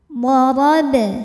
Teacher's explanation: Huruf ra dibunyikan secara tafkhim karena berharokat di atas. Cara bacanya ditebalkan.